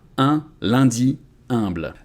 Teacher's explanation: if you go to Paris all the words with [œ̃] you can pronounce them as [ɛ̃] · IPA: [œ̃] / [ɛ̃]